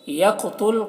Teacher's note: قاف کو پر پڑھنا ہے، یہ حروف مستعلیہ میں سے ہے اور قاف میں قلقلہ بھی کرنا ہے